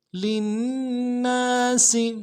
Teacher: سین کی سیٹی باریک ہوگی